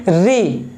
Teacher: जीभ कहां टकरा रहा है, ऊपर मूर्धा पे टकरा रहा है, तो उसी को बोलते हैं मूर्धा स्वर बोलते हैं, ठीक है।